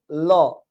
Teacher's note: ল উচ্চারণ করার সময় জিহ্বার উপরের থেকে দ্রুতগতিতে নিচের দিকে ধাবিত হয় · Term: পার্ষিক বর্ণ